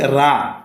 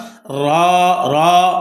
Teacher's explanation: এই র কে কোন সময় রা বলা যাবে না রা বললে হরফ সহি উচ্চারণ হবে না সঠিক উচ্চারণ র র মোটা হবে